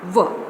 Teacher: व is the dental and labial both, क्योंकि व को उच्चारित करते समय आपके दांत भी आपस में टकराते हैं और आपके होठों से हवा भी निकलती है और जो लिप्स हैं वो आपस में भी टच करते हैं।